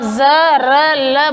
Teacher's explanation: अब है वत्स्य, दांतों की जड़ों से। जब हमारे दांत और मूर्धा के बीच का भाग है, वहाँ पर आपकी जीभ जब टच करती है तब आप ज, र, ल बोलते हो।